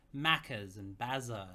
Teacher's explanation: you drag your words out a little and then you end all your words in a vowel